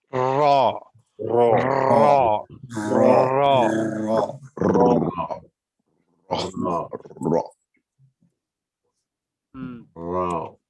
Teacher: ये है आपका मखरज नंबर 11। जबान के किनारे की पोस्ट जब ऊपर वाले 3 दांतों की मसूड़ों से लगे तो इससे रॉ निकलता है